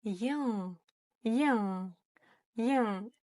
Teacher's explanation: мы не дотягиваемся кончиком языка до верхнего неба. И в этот момент произносим обычную букву Н. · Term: букву Н с хвостиком